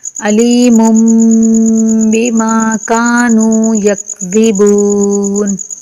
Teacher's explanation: میم تنوین کے بعد بھی چھوٹا میم آنے کی وجہ سے میم کا اس میم میں ادغام ہوگا، یعنی کہ دونوں میم کو ملا کر پڑھیں گے۔ علیم، میم تنوین کا میم میں ادغام ہوگا اور اس کے بعد با آنے کی وجہ سے غنہ ہوگا